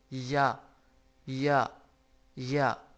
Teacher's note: منہ کے خالی حصہ کی ہوا سے یا ادا ہوتا ہے